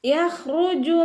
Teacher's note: റ വമ്മയായതുകൊണ്ട് നമ്മൾ ഉയർത്തി ഉച്ചരിച്ച് കൊടുക്കുക കേട്ടോ. മിൻ ബൈനി, ഇവിടെ നൂൻ സാക്കിനയുടെ നിയമമായിട്ടുള്ള ഇഖ്ലാബാണ് വരുന്നത്. · ഖ ഇസ്തിഅലാൻ്റെ ലെറ്ററാണ്, തഫ്ഹീം ചെയ്തിട്ട് ഉച്ചരിക്കുക. യഖ്റുജു റ വമ്മയായതുകൊണ്ട് നമ്മൾ ഉയർത്തി ഉച്ചരിച്ച് കൊടുക്കുക കേട്ടോ.